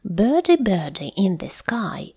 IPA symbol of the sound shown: ɜ: